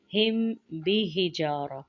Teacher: मीम साकिन के बाद बा आ रहा है तो यहाँ पे इख्फाए शफवी का कायदा है।